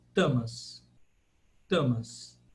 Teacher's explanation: com a língua encostada atrás do dente